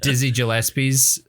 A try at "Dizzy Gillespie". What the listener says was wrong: How did you just pronounce his name? It's a hard G.